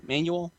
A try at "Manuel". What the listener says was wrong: Manuel. right, it's not like the labor kind. It's like the guy kind.